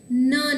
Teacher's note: નનું ઉચ્ચારણ જ્યારે થાય છે ત્યારે ન છે એ દાંતના સ્થાનેથી ઉચ્ચારાય છે અથવા તો જીભનો અગ્રભાગ છે એ દાંતને સ્પર્શે છે. આથી કરી અને ન છે એને અનુ દંત્ય અનુનાસિક ધ્વનિ તરીકે આપણે ઓળખીએ છીએ.